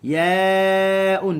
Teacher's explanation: panjang 4 harakat, mad wajib, mad muttasil